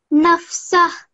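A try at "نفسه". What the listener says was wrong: Excellent. Really good.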